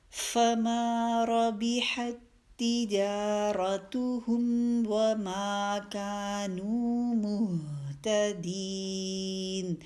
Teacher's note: یہاں پہ دیکھیے ربحت میں ایک تا آپ کو نظر آ رہی ہے اور آگے تا مشدد بھی نظر آ رہی ہے، تو آپ نے ربحت کی تا کو نہیں پڑھنا الگ سے، کیونکہ یہ تا آگے مرج ہو گئی ہے، تو وہی تا مشدد ہم نے پڑھنا ہے، یہ والا تا نہیں پڑھیں گے.